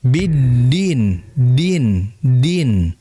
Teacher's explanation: ujung lidah yang ditempelkan ya gigi seri atas sebagian dalam atau dekat gusi di situ huruf dal